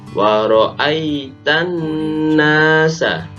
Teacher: Ketika alif lam syamsiyah, maka harus dibaca idgham. Artinya langsung masuk ke nun, alnya tidak dibaca.